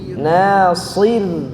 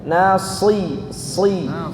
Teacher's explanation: Roknya tipis, shadnya tebal.